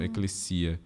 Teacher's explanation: E o S, mesmo entre vogais, a gente sempre pronuncia ele surdo.